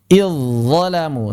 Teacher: Contoh, id bertemu zalamu, maka di sini aslinya sukun id kalau waqaf. Tapi ketika wasal maka dia dzalnya tidak dibaca, langsung masuk ke dha, makanya diberi tanda tasydid. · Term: idghamu dzali fi dha